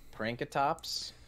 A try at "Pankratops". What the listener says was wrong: Pankratops. Pankratops. pranks. No prank. Pankratops. Hanky panky.